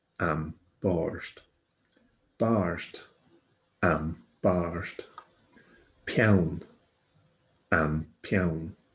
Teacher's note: you bring your lips together to make these labial sounds, B, F, M, P.